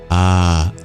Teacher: you notice in the vowel space ah and U are extremities ah is produced at the back of the throat